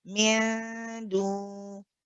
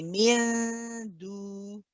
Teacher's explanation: Now you have to be careful here because when you have the gunna here, when you're saying min, the next part, you shouldn't have any gunna